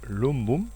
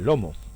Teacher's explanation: latino lumbum piensa en ocultismos como lumbar evoluciona al español lomo MB pasaría a MM y la simplificación resultante es una simple m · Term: asimilación